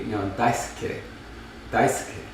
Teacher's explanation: Depending on the speaker, you might hear the vowel, but it's voiceless.